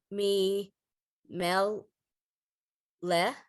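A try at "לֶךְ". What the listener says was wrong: I thought I heard a huff at the end. lech. left, plain left.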